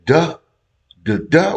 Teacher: we're not actually saying D. We actually saying TH, but it be fast and it sound like D.